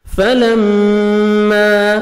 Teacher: میم مشدد غنہ کریں گے، نوز میں ساؤنڈ لے کے جائیں گے